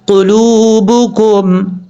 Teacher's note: اب اس کے بعد ہے قلوبکم، قاف پیش قو، لام باؤ پیش لو، با پیش بو، کاف میم پیش کم. قلوبکم، یہاں قاف حروف مستعلیٰ میں سے پر پڑھا جائے گا. لام کے بعد واو ہے، یہ واو مدہ ہے، 1 الف کی مقدار، اس کو لمبا کر کے پڑھیں گے.